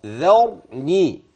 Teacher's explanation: الذال طرف اللسان الراء تفخم